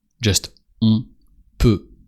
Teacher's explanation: On peut. And here, as just after the on, there is a consonant, a P, so not a vowel, you don't pronounce the N of on. Just on peut.